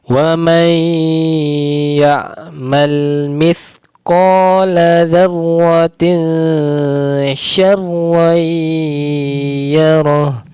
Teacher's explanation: tanwin bertemu sya, maka didengungkan, disamarkan, ditipiskan, diarahkan ke huruf sya, yaitu makhrajnya di tengah lidah